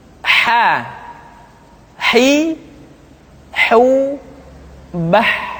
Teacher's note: Huruf ha dikeluarkan dari tengah-tengah tenggorokan.